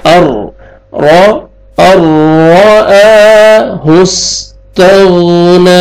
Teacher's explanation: यहाँ पे आपने इदगाम करना है, हमज़ा को रा मुशद्दद के साथ मिलाएंगे, नून छोड़ देंगे और बगैर गुन्ना के यहाँ पे इज़हार होएगा। और रा को ज़बर है, रा को मोटा करके पढ़ेंगे